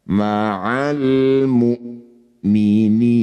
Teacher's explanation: Hamzah punya sifat syiddah. Tertahan jangan tertukar dengan saudaranya yaitu ain.